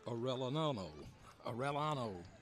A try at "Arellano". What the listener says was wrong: I'd say Arellano. That double L in the Spanish language is a ya, not a double L.